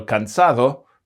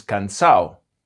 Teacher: Sometimes those sounds can disappear altogether, and that's especially common in the ending A-D-O